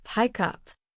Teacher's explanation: The K sound connects smoothly to the U.